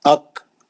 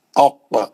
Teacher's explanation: کاف میں خلخلہ نہیں ہے، خاف میں قلقلہ ہے کیونکہ خوف حروف خلقلہ ہے، خطب جد کا ہے.